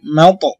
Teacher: এখানে কলকলা করবেন এবং তটা দ্বিতীয়বার আবার ছোট করে উচ্চারণ হবে